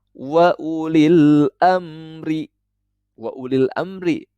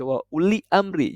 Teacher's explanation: Tidak boleh dibaca wa uli amri. Jadi alif lamnya ini terdengar jelas ketika kita membaca ulil amri. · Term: alif lam qamariyah